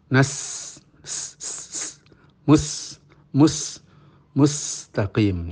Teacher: sin itu memiliki sifat safir. Safir itu siul.